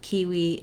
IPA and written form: ˈkiːwiː (KIWI)